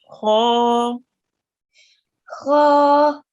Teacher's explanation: So it's a thick letter. It will be pronounced with your mouth rounded, and it carries a vertical fatha.